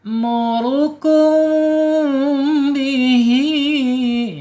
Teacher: ketika ada mim sukun ketemu huruf ba ya dibaca ikhfa syafawi harus dibaca samar dan ditahan dua harakat